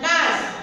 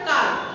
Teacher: আমি যখন কাজ বলি তখন আটা উচ্চারণে দীর্ঘ হয়েছে, এবং যখন আমি কাল বলি তখন উচ্চারণটা কম হয়েছে, মানে হ্রস্ব হয়েছে।